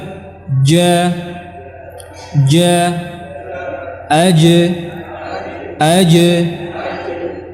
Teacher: adalah sifat-sifatnya Adapun pada huruf Jim maka dia sifatnya syiddah ja rapat makhrajnya ja ja ya tidak di berikan celah untuk udara